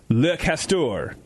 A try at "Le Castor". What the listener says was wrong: You pronounced the S too hard.